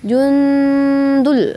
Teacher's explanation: Hua jun nun mati bertemu dengan huruf dal itu ikhfa halqi. Jadi bacanya samar ke huruf dal